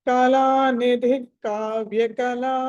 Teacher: కళానిధి okay, ఇక్కడ కళానిధి తర్వాత కావ్య కళ ఉంది కాబట్టి విసర్గ తర్వాత కా ఉంది కాబట్టి హాఫ్ విసర్గ పలకాలి